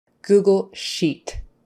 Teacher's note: make sure you get your long e e sheet you don't want to be making it a short I